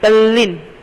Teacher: ત વર્ગ દંત્ય વ્યંજનો ત, થ, દ, ધ, ન ના વ્યંજનો સાથે લ વ્યંજન આવે તો દંત્ય વ્યંજનનો લ થાય છે. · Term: વ્યંજન સંધિ